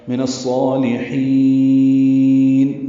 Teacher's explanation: نون کو الصالحین کے صاد سے ملا دیں گے، ادغام شمسی ہوگا، الف لام نہیں پڑھیں گے، صاد پر پڑھیں گے، لام باریک پڑھیں گے.